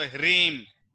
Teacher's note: સ્વર ઉપર ચંદ્રબિંદુ લાગે એટલે કે એનો નાક ઉપરથી ઉચ્ચારણ કરવાનું હોય.